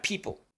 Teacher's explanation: verbo he como ya lo expliqué y luego la palabra people la p que es un poquito más explosiva que en español